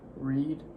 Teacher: Your tongue tip was raised up in your mouth.